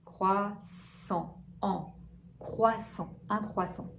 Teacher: Voyelle nasale, comme si c'était un A, une voyelle A, mais avec l'air du nez.